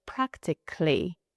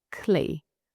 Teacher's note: In practically, we don't pronounce the second a.